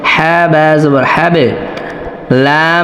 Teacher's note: বা সাকিন আসছে কলকলা করতে হবে